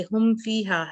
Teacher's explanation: میم بھی آپ کے ہونٹوں سے ادا ہوتا ہے اور اسی طرح فا بھی ہونٹوں سے ادا ہوتا ہے، ٹھیک ہے۔ لیکن اگر آپ میم پر پوری طرح سے اپنے ہونٹوں کو بند نہیں کریں گی تو فا پہ چلی جائیں گی تو میم رہ جائے گا، کہیں نہ کہیں اس کی آواز कम हो जाएगी, रह जाएगी।